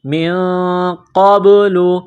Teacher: نون ساکن کے بعد قاف ہے، حروف اخفا ہے، تو نون ساکن پر غنہ کریں گے